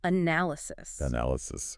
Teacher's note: It's on the third syllable, ly, analysis.